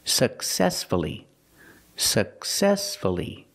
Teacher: The stress is on the second syllable, so we pronounce the U.